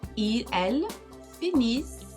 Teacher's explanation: E o NT eu não pronunciei. Lembra, desde do primeiro grupo, o NT nunca pronunciei.